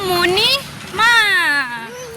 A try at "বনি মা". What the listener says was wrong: মনি নয় বনি।